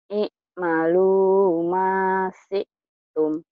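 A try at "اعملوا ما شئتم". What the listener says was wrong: Ain sama sinnya belum keluar. I'malu masyi'tum. I'malu ma kayak gitu ngeden dikit. Iya, tapi ketenggorokan jangan ngeden.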